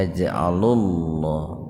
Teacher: Tabhim itu kebalikan dari tarkik ya. Lafaz Allah didahului domah, maka lamnya dibaca tebal.